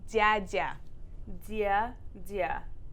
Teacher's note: The tongue does move more up to the front instead of flat where I had it for dama.